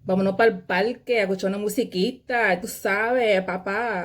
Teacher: you always hear like their voice kind of goes up at the end of each sentence